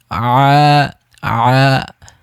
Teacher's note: আইনের উচ্চারণটা হচ্ছে গলার মাঝখান থেকে, হা এবং আইন এবং উচ্চারণটা সেম জায়গা থেকে, গলার মাঝখান থেকে।